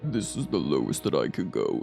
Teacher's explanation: this is the lowest that I can go and it takes a lot it actually has a lot of vocal fry